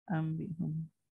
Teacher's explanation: Hukumnya kalau orang kata ambihum ini hukumnya apa? Kita jawab Nun mati berjumpa huruf ba, iklab, dengungnya 2 harakat.